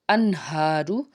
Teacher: ہا جو ہے حرف حلقی کا حرف، حلق کے نچلے حصے سے اس کو ادا کریں گے۔ انہارو، نون ساکن کے بعد ہا آ رہا ہے تو یہ اظہار کا قاعدہ ہے اور ہا کے اوپر کھڑا زبر ہے، 1 الف کے برابر اس کو کھینچ کے بھی ادا کریں گے۔